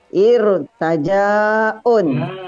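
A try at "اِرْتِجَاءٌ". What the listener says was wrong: Irti, bukan irta, irti. Baris kasroh.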